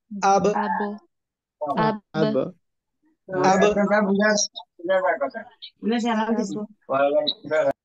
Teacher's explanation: বা অক্ষরটা উচ্চারণ হয় কোন জায়গা থেকে? দুই ঠোঁট থেকে। তাহলে দুই ঠোঁট থেকে দুটো হঠাৎ করে কি আবে।